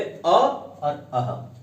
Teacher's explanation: जिन स्वरों का उच्चारण कंठ से होता है वो है अ और अह। इनका उच्चारण स्थान है कंठ।